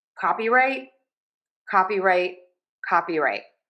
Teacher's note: So we are going to stress caw. This has that open ah sound in English. That's the short O sound.